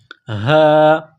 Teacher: یہ چشمے والی گول ہاں ہے، صرف منہ سے ہوا نکالنے کی طرح اس کو پڑھیں گے